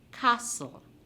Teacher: No T sound in the word castle. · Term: silent